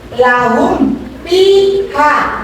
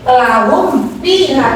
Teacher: Membacanya adalah harus dengan jelas. Jelas hurufnya, tidak ada kata-kata dengung. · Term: iza safawi